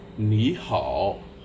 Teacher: when you have 2 third tones together, you might notice that the first third tone becomes a rising tone.